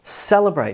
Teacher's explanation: So there's some emphasis on the first syllable, cel, almost nothing on that vowel sound, and then the third syllable, brate, gets most of the emphasis. Celebrate. This is called primary and secondary stress.